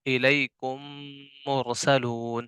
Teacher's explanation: इदगाम होगा यानी नून, यानी यानी दोनों मीम, ठीक है, यानी दोनों मीम एक हो जाएंगे और उसमें गुन्ना भी होगा